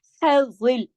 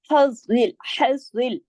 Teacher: मिस्लु, मिस्लु हज़िल, हज़, हा को गले में चलती आवाज सांस की तरह ना। हज़िल, ज़ा को मोटा पढ़ेंगे, डबल पढ़ेंगे क्योंकि तशदीद के साथ है